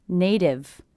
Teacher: it's a T coming between 2 vowel sounds, will be a flap T, sounds like a D.